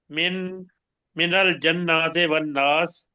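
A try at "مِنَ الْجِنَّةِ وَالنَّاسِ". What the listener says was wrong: جیم کے نیچے زیر ہے.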